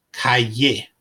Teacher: the Double L is pronounced like the English y